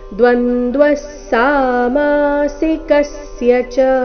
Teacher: ವಿಸರ್ಗದ ಉಚ್ಚಾರಣೆ ಸ ರೀತಿ. ದ್ವಂದ್ವ ಸಾಮಾಸಿಕಸ್ಯ ಚ ಕಸ್ಯ ಕ ಮೇಲೆ ಆಘಾತ.